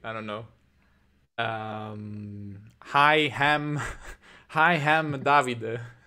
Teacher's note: there's this hypercorrection phenomenon where we add the H to every word starting with a vowel.